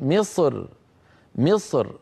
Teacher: وبعض العرب كان اذا وقف رقق الراى فيقول مصر مصر مصر فيرقق الراء من اجل الكسره التي على الميم